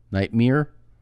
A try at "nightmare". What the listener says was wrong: You're saying it wrong. Yeah, nightmare. Nightmare. You're saying it like it's a horse, a nightmare. nightmare. It's Nighthte, Nighmere. Nightmare. Nightmare.